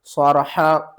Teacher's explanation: और लाम को हमने स्वाद के साथ मिलाना है, स्वाद को दो बार पढ़ना है, स्वाद को मोटा करके पढ़ना है, स्वाद को सख्ती के साथ पढ़ना है